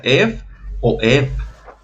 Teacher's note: Para el caso de eu, el diptongo eu no se pronuncia de literal eu, se pronuncia ef o ev, si tuviéramos una f o si tuviéramos una ov.